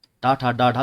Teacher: जो टा वर्ग होता है ना मेरे भाइयों, ये मूर्धा से बोला जाता है।